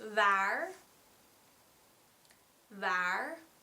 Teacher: You put your front teeth on your bottom lip, you use your voice, you use your vocal cords, and try to not use as much air as you would with a V. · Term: Dutch W